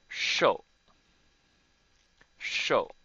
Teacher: this is fourth tone, so you say it quickly